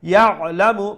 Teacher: make sure you pronounce the ain from the middle of the throat so that it does not sound like a hamza